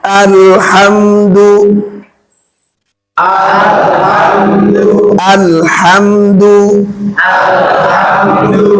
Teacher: Jelas. Dinampakkan bunyi m-nya tanpa ditahan. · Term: izhar syafawi, idhar Syafawi